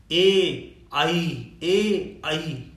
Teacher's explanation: ए आई जब हम बोलते हैं तो इसमें जो है कंठ और तालु दोनों को स्पर्श करते हैं, जबान हमारी दोनों तक पहुंचती है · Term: कंठ तालु